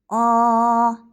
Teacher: Shuning uchun u unli tovush. Lablarimizni biroz oldinga chiqarib talaffuz qilamiz. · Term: O tovushi